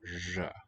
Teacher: the R and the Z are sort of telescoping into a single sound